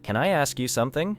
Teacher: The final N in can connects smoothly with the vowel sound in I. Then I flows directly into ask.